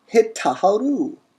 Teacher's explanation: The tav assimilates into the tet, and we get hit taharu. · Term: assimilation